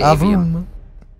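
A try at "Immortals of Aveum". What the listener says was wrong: Long A, Avium.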